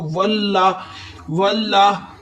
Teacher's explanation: लाम मुशद्दद वाला हरफ है, मुशद्दद वाला हरफ हमेशा 2 दफा पढ़ा जाता है।